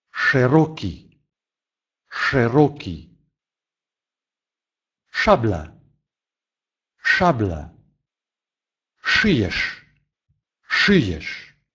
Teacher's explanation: звук который произносится всегда твердо как в русском языке звук ш